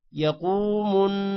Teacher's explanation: قوف موٹا ہوگا، اور قوف کے بعد واو ہے، لمبا کریں گے تھوڑا سا